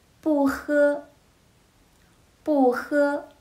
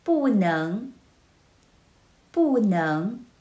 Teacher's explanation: in normal situation, it will be spoken as the fourth tone, followed by first tone, second tone, and third tone.